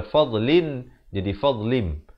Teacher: iqlab ini ditukarkan daripada bunyi Nun kepada bunyi mim